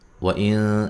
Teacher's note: یہاں نون ساکن کا اخفا مع الغنہ ہے، باریک اخفا ہے